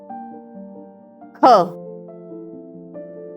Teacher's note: महाप्राण जिसको बोलने में अधिक वायु निकले और यह हर एक वर्ग का दूसरा और चौथा शब्द होता